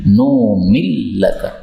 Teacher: nun ketemu lam boleh idgham. Tapi memang bacaannya hamzahnya dihapuskan